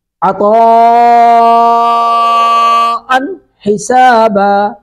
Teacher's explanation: حمزہ پر تنوین، ان تنوین کے بعد ہا حروف اظہار میں سے ہے.